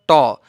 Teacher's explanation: जिब्रोले सासलाई एकछिन नथुन्दासम्म, नरोक्दासम्म ट उच्चारणै हुँदैन। जिब्रोलाई नबेर्दासम्म ट उच्चारण हुँदैन।